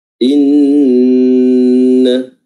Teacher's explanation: nun yang bertasydid itu diperjelas lagi gunnahnya dan dengan menambah durasi dari tasydid tersebut, ya. Inna, ya, jangan langsung inna, ya.